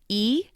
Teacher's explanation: the e sound is called a front vowel because it's made in the front of the mouth